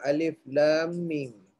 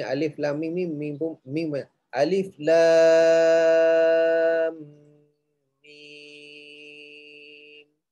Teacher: Pada huruf baca 6 harakat. Tak boleh baca 4-5.